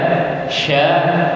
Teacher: kalau huruf sya, kalau diperhatikan itu tengah lidah tidak menempel tapi mendekati langit-langit. Tidak menempel seperti ja.